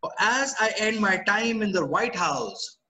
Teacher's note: rising tone, wanted to continue the statement